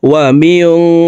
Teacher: এখানে নুন সাকিনের পর ইকফার হরফ শিন আসছে এই কারণে এই নুন সাকিনকে নাকের ভিতরে লুকাইয়া গুন্নার সহিত পড়তে হবে